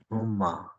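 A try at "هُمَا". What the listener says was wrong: No shadda on the meme.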